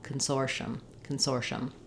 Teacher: a clear vowel in that stressed syllable soar is long the other syllables are short and then uh if you say it as Consortium with four